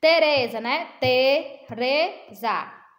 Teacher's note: A sílaba pronunciada com mais intensidade, ó. Tereza. Então, é o re, o RE, certo?